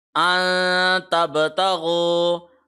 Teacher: نون کو ناک میں پڑھنا ہے، 1 سیکنڈ لمبا کھینچ کے پڑھنا ہے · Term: اخفا